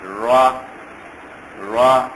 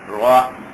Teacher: اس کو ذرا زبان کی جڑ اوپر کی طرف اٹھا کے ادا کریں گے اور چھوٹی مقدار میں